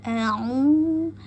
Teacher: pastikan mulut terahang terbuka pak pada Hamzah pangkal tenggorokan a u kemudian masuk ke u dua harakat karena ada wau mati